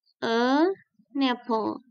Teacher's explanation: Ada kata yang dimulai dengan huruf atau sound yang vowel gitu ya. The consonant sound carries over the next word.